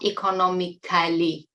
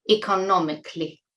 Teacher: notice that it is not 'economiCALLY'. Many of you make this mistake of pronouncing 'C-A-L-L-Y' as 'kally'. It's 'cli': economically.